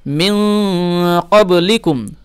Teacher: নুন সাকিনের পরে কি এসছে কফ মানে ইকফার হরফ, সে কারণে এখানে গুণনা করতে হবে